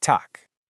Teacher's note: That final G sounds like a K, so we say tak.